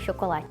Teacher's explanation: The CH for us sound like sh.